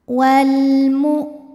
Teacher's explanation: Selanjutnya ada hukum alif lam qamariyah, karena ada alif lam yang menghadapi huruf qamariyah yaitu huruf mim. Maka cara membacanya, lam sukun ini dibaca dengan jelas atau biasa disebut dengan idhar qamari. Wal mu, hamzah suaranya tertahan saat ditekan terhadap makhrajnya, karena hamzah ini punya sifat namanya syiddah, kuat ya.